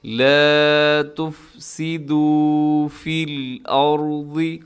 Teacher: یہاں پر را ساکن ہے، اور را سے پہلے حمزہ کے اوپر زبر ہے، تو اس را کو اپنے موٹا پڑھنا ہے۔ آگے حرف ضاد، اس کو بھی اپنے موٹا پڑھنا ہے، فی الارض۔